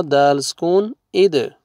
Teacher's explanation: دال دیکھیں، با، جیم، دال. دال دیکھیں حروف قلقلہ میں سے ہے تو یہاں پہ ڈبل ساؤنڈ آئے گا